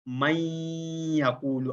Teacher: زبان کو یا کے نکلنے کی جگہ پر لگا کر نون کی ادھوری سی آواز کو ناک کی جڑ سے نکالتے ہوئے غنہ کی ادائیگی کی جاتی ہے